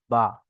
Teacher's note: দুই ঠোঁটের ভিজে অংশ হতে উচ্চারণ হয় বা।